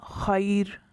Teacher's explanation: ہم نے را کو وقف کی وجہ سے ساکن کر دیا اور پیچھے یا ساکنہ ہے، اس وجہ سے اس را کو باریک پڑھیں گے